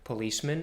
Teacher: in policeman we use the reduced vowel the lazy schwa in the end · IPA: [ə]